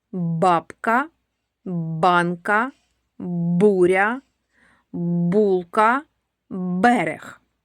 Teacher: Ці слова починаються зі звука Б. Він дзвінкий.